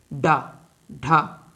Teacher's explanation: साथ में द्वि पृष्ठ या ताड़न जात व्यंजन भी कहते हैं इनका उच्चारण कर समय हमारी जीभ हमारे ताल को छूते हुए एक झटके के साथ नीचे आती है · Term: उत्क्षिप्त व्यंजन, उच्छिप्त व्यंजन